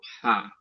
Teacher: আইন হা, এটা হচ্ছে একদম গলার ভেতর হলকের শুরু থেকে